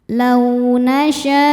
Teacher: Lau ada harfulin karena ada waw sukun sebelumnya fathah. Cara bacanya lembut atau lunak.